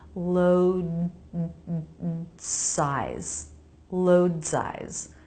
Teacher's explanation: Notice what's happening with the D. I don't release it, but I don't drop it. I make a really quick D sound in my vocal cords before the S.